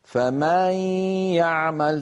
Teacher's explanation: تجد مثلا بعض إخواننا حتى مثلا لا لأسباب عديدة، من جملة ذلك أنه يقول فمن يعمل، ماذا يحدث؟ يمط صوته زيادة في فتحة الميم في كلمة فمن، فيتولد من ذلك ألف، وكأنه زيد في القرآن حرف. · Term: التمطيط